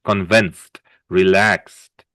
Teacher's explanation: We don't really pronounce the ed, just a t. A D, but a soft D, like a T.